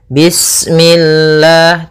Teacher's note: lafal Allah ketika sebelumnya kasrah maka dia dibaca dengan tipis, ya, dengan L.